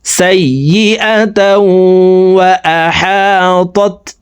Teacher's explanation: بلى من كسب سيئة وأحاطت به سيئة তাও এখানে ইদগামে বা গুন্না, তানউইনের পরে ইদগামে বা গুন্নার 4 হরফের একটি হরফ ওয়াও আসছে, এই কারণে এই তানউইন ওয়ালা তাটি অর্থাৎ 2 জবর ওয়ালা তাটি তাসদিদ ওয়ালা ওয়ার সাথে গুন্নার সহিত মিলাইয়া পড়ব